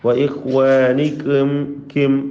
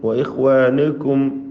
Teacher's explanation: വഇഖ്വാനികും കിം വഇഖ്വാനികും വഇഖ്വാനുകും എന്ന് ചുരുക്കി പറഞ്ഞാൽ വായ എങ്ങനെയാണോ വെക്കേണ്ടത് ദമ്മ് ഉച്ചരിക്കുമ്പോൾ ആ രൂപത്തിൽ വ്യക്തമാക്കി ചുണ്ടുകൾ വൃത്താകൃതിയിൽ വെച്ചുകൊണ്ട് ദമ്മ് ഉച്ചരിക്കണം